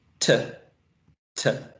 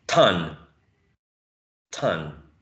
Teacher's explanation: is um aspirated because it's an initial position right t t the following sound if I'm if I'm mistaking